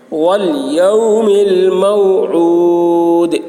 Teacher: میں واو ساکن سے پہلے زبر ہے تو واو لین ہوا، واو لین کو نرم آواز کے ساتھ جلد پڑھنا ہے ، والیوم الموعود، عین حلق سے ادا کریں گے، یہاں پر